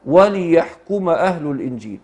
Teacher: الكلام في تقديم وتأخير، يعني وحمزة وليحكم يحركه بكسر ونصبه، يعني يحركه يحرك الحرفين الساكنين الأول والأخير، الأول بالكسر والأخير بالفتح